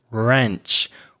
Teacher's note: an American pronunciation of ranch so it's a more open Sound